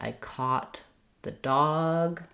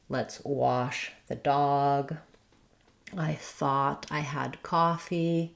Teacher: in American English in this case this is just a simple a vowel, not a sliding vowel